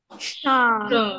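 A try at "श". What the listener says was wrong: Okay, not Sa. Sha. Like SH.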